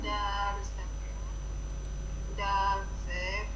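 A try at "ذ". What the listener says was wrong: Is this dal or zal? Yeah, zal pesh.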